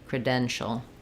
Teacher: If there's any vowel here, it's going to be a little sound, but for the last syllable, shul, you're going to just move as quickly as you can from your sh to your ul to your dark L